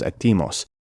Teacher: They moved the stress accent from the first syllable to the second syllable. Etimos becomes atimos.